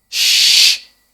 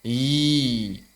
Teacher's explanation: huruf shin tengah lidah mendekat ke arah langit-langit sambil mengembuskan napas, shh. Sedangkan huruf ya tengah lidah naik tidak sambil mengembuskan nafas. I. Kalau shin itu hams, kalau ya itu jahr.